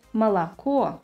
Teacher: As you can hear in the word «молоко», the first two letters are pronounced like «а», whereas the final «о» should be pronounced like «о» without any reduction because it is stressed